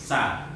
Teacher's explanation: istifal itu artinya pangkal lidah tidak naik ke atas. Jadi biasa, makanya dibaca tipis. Sa. Artinya membacanya itu ringan dibandingkan dengan membaca huruf shod.